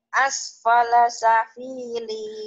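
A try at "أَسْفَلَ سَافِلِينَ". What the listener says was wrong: Sanya panjang.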